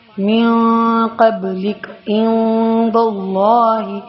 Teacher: اخفا نون ساکن یا تنوین کے بعد ان 15 حروف میں سے کوئی حرف آ جائے یعنی جو با اور حرف یرملون اور حرف حلقیہ کے علاوہ کوئی حرف آ جائے تو نرم غنہ کے ساتھ پڑھیں گے. اخفا کریں گے یعنی ناک میں آواز کو چھپائیں گے